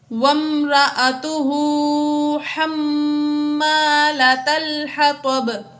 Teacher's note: حما میں میم مشدد ہے اس لیے یہاں پر غنہ کیا۔ حطب، حطب میں آخر میں با ساکن ہوگی، حروف قلقلہ میں سے با ہے تو اس میں قلقلہ ظاہر کر کے پڑھا۔